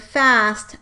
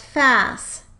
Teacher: An example of this process occurring in the syllable coda would be the production of the word “fast” as “fas” – in this case, the consonant cluster (“st”) is in the coda and the /t/ was deleted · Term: cluster reduction